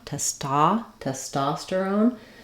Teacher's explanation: our stress is in the second syllable so that letter O says the a sound